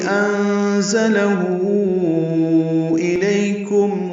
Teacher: نون ساکن کے بعد زا آنے کی وجہ سے زا تیز صفیر کی آواز سے ادا کریں گے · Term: اخفا